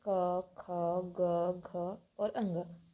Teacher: कंठ के द्वारा होता है वे कंठ कंठ ध्वनियां कहलाती हैं कवर्ग के जितने भी वर्ण है इन सबका उच्चारण कंठ के द्वारा होता है यह कंठ ध्वनियां कहलाती है जैसे क ख ग घ और